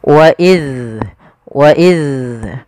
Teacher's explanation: ujung lidah kita menempel dengan gigi dari atas. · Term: zal